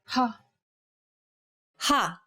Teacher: Saying this sound involves a forceful expulsion of air.